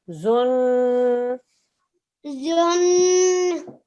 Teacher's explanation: The noon mushaddad means a 2-second nasal sound.